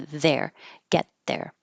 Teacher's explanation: I'm pushing my tongue further forward and blocking the airflow for the T, knowing that the TH is coming up. So instead of get my tongue perfectly behind my teeth, I can put it more between get and then be ready for there.